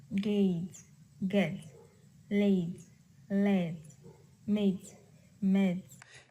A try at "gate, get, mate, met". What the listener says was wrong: Now, my recommendation on lesson 10 is to make, excuse me, the long vowels sound longer. So gate, get, mate, met. So these are all the same sounds. Gate, late, mate, blade, dane.